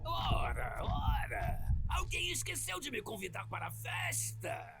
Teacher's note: And to speak a little bit on dialects, so many of the characters in Reignited, including Spyro, have a Carioca dialect, which originates from Rio de Janeiro. And so one of the most famous aspects of that dialect is that the S sound is usually replaced with a sh sound